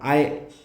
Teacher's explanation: ऐचा उच्चार करताना आय म्हणतो तेव्हा आ अधिक ई किंवा ई येतं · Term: संयुक्त स्वर